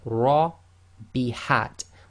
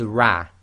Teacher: So when the Ra itself carries a Fatha, it will be pronounced as tafkheem, i.e. heavy, full mouth, i.e. lifting up the posterior of the tongue, making your mouth more full, the lips go slightly round, so this will be Ra.